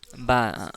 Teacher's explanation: हाँ, गीला वाला, जिसे बोलते हैं नर्म, नर्म हिस्सा। होंठों के नर्म हिस्सा से मिलकर बा अदा होता है